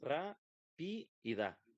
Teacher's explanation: La separamos en sílabas ra, pi y da. Bueno, la sílaba tónica es ra.